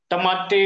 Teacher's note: टमाटे उच्चार करताना आपली जीभ ट चा उच्चार ज्यावेळेस करते त्यावेळेस वरच्या दाताचा मागचा जो भाग आहे त्या भागाला खडबडीत भागाला आपली जीभ स्पर्श करते म्हणून आपण त्याला मूर्धन्य वर्ण म्हणतो.